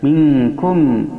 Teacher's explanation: membacanya mim mati dibaca dengan jelas pada bibir · Minkum fa in tanaza'tum, in nun mati bertemu dengan ta, hukumnya ikhfa aqrab dikarenakan nun mati bertemu salah satu huruf ikhfa aqrab yang 3, yaitu t, to, dan dal. Cara membacanya ikhfa aqrab ini lebih dominan samarnya daripada gunnahnya, sehingga mendekati huruf n saja, cuman disamarkan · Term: idhar syafawi